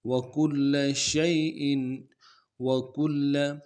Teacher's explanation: کاف کو باریک ادا کریں گے، لام کے اوپر تشدید زور دیں گے